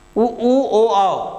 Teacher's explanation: उसको मैंने पढ़ लिया कि उच्चारण करते समय जो आपके मुख की स्थिति होगी ओष्ठ की वह बेटा ओष्ठ गोल आकार में बनेगा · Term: वृत्ताकार